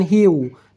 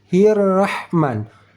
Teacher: bertemu dengan huruf ra ber bertasydid saat kita membacanya hirrahman hirrahman dari ha berbaris kasrah langsung masuk ke dalam huruf huruf ra yang bertasdid tidak pakai wau